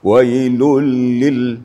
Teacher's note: lam itu harus ada penekanan digetarnya ke langit-langit ya